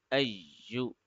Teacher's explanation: Then Hamza Fatha is being connected with Ya with Shadda, because whenever a letter has a Shadda on it, the previous letter or the letter behind it has to be connected with the letter. So we will press the Ya for 1 second because of the Shadda here. We will put some emphasis on it.